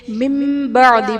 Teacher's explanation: نون ساکن کو میم سے بدل کر اخفا کریں گے، یعنی غنہ کر کے پڑھیں گے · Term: اقلاب